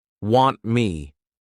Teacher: all we're doing is we're not pushing out that t sound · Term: flat t